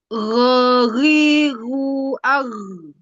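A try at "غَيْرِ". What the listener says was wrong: kurang ke atas sedikit makhrajnya dia iltibas dengan harfu kha. Dia bercampur sedikit dengan harful kha. Gha gha ghawiru ar.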